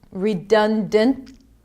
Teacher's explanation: sometimes the T is barely pronounced, it could be a held T